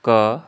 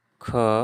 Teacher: तो पहले हम ध्यान देंगे कंठ्य, तो ये शुरू होता है क, ख, ग, घ, क, ख, ग, घ। यानी क को बोलने में कम समय लग रहा है, ख को बोलने में ज़्यादा समय लग रहा है, तो क के हम अल्प प्राण और ख के हम क्या कहेंगे, महाप्राण बोलेंगे।